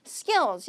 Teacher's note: 얘도 이제 쌍기역 발음이 나야 되는 거죠